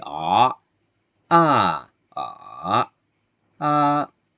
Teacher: you can hear that I say the the same vowel but with different tones